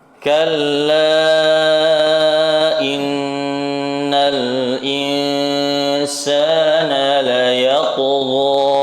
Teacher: Pantulkan huruf ta-nya karena memiliki sifat qalqalah namun ditebalkan juga.